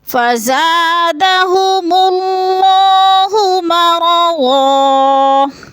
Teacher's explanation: زن پہ تھوڑا سا ناک میں آواز لے جائیں گے، اخفا کریں گے